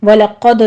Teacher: قوف پہ پر ہے، آگے دال کے اوپر قلقلہ کریں گے